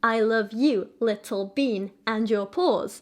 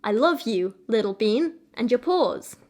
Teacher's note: That would be, for example, anapestic trimeter. So 3 repetitions of the 3 syllables with the stress being on each third syllable